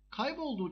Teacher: Kaybolduğu kelimesine baktığımız zaman bir ı'nın düştüğünü görüyoruz. Kayıp, kayıptaki ı düştü, ünlü düşmesi.